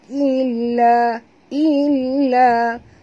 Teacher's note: lam ada dua, maka kita baca njut. Ataupun tekan. Illa, la dua harakat.